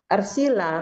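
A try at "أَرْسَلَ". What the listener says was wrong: KKL-nya arsala. Arsala KKL-nya. Arsala kan af'ala, bukan af'ila. Arsala semua kalau af'ala mah.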